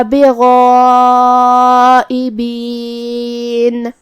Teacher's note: مد واجب متصل میں ہم اپنی آواز 4 مد کے برابر لمبی کریں گے